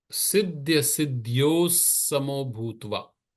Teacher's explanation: Now, when you have siddhya, siddhyo, normally you will say siddhyo ho, but before the sa, it will become a sa sound. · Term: visarga